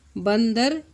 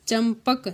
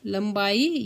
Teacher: जिस वर्ण का उच्चारण करते समय वायु केवल नाक से बाहर निकलेगी उसे हम अनुस्वार कहते हैं